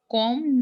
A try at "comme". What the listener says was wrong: Come. So this is come. Okay, not com, but this is come.